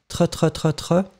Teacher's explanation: c'est pas très très fort le R. Donc vraiment, c'est clairement, ça n'est pas avec la langue. Hein, tre. Mais c'est guttural, mais allez-y doucement avec, avec la gorge, parce que ça peut faire mal.